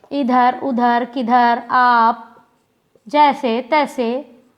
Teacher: हम सीधे बोल दिए, कहीं भी हमें नाक की सहायता नहीं लेनी पड़ी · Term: निरनुनासिक